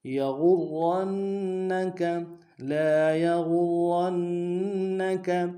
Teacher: لا یغرنک میں غین کو را کے سامنے لانا ہے، را کے اوپر تشدید زور دیں گے، را کو موٹا کریں گے، اور را کو آگے نون کے سامنے لانا ہے، نون کے اوپر تشدید زور دیں گے